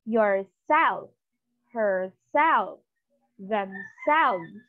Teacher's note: So what's the rule? The stress is on the second syllable. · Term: reflexive pronouns